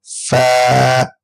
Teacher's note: اوپر کے دانتوں کے کنارے اور نچلے ہونٹ کے تر حصے سے ہم فا کی ادائیگی کریں گے